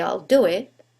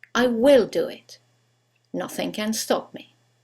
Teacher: when we use the contraction there is no stress on the contracted form